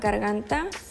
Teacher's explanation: sentirás como la parte trasera de la lengua se separa del velo para dejar pasar el aire · La consonante G es oclusiva y velar · la vibración de las cuerdas vocales porque es consonante Sonora